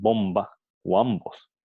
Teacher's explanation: los labios se cierran completamente impidiendo el paso del aire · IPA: /b/